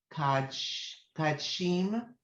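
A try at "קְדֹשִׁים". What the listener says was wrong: So there's a O up here. You see the dot? So K. Kedoshim.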